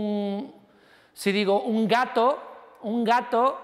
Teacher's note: ahora la N es velar